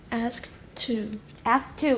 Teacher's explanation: alveolar stops are reduced or omitted when between two consonants